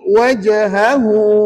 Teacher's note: sebut hu tu panjang dua harakat Puan jangan baca pendek sebab ada wau kecil kat situ pastikan